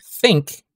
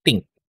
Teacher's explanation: Ang voiceless TH, pinapalitan natin siya ng letter T.